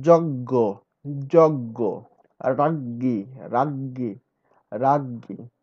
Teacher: চ ও বর্গীয় জয়ের পর নাসিক্য ধ্বনি তালব্য হয়